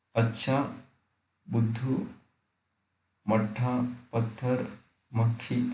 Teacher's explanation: हिंदी में 2 महाप्राण व्यंजन कभी द्वित्व होकर नहीं आते। पहला व्यंजन हमेशा अल्पप्राण ही होगा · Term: व्यंजन द्वित्व